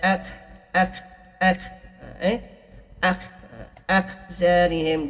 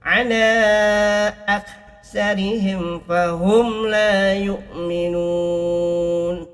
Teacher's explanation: Dia bukan huruf qalqalah, dia hamas. Dia ada angin, keluarkan angin. seperti huruf ta, itu pun adalah huruf hamas.